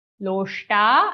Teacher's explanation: First sh after lo is a shatkon murdhanya sh sound. Loshta, and after ta the sh is a shalaka sh.